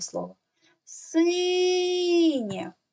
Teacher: який звук ми найдовше тягнемо звук і він стоїть у першому складі тому в слові синє перший склад Я наголошений тепер дітки ми · звук буква є позначає звук е голосний ненаголошений позначаємо кружечком дивіться в кінці слова після приголосного стоїть буква є і позначає не два звуки й е а тільки звук Е